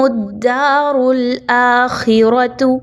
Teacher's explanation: را کو پر پڑھا جائے گا، باریک نہیں پڑھنا کیونکہ را کے اوپر پیش اور زبر کی حرکت موجود ہے، جبکہ خا آلریڈی ایک ایسا حرف ہے جو ہمیشہ موٹا پڑھا جاتا ہے، تو اس کو باریک نہیں رہنے دینا۔